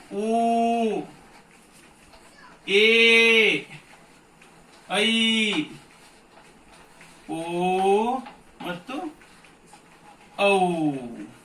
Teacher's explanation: ಎರಡು ಮಾತ್ರ ಕಾಲದಲ್ಲಿ ಉಚ್ಚರಿಸಲ್ಪಡುವ ಅಕ್ಷರಗಳಿವೆ ಅದನ್ನು ನಾವು ದೀರ್ಘ ಸ್ವರ ಅಂತ ಹೇಳ್ತೀವಿ